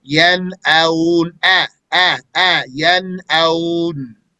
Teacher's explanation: When you have the fatha before the waw sakina, you want to make sure that fatha stays pure.